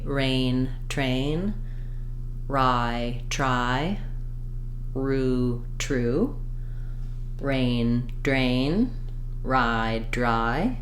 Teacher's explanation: my tongue may be a little bit further back than usual in order to be able to keep that tongue braced in the back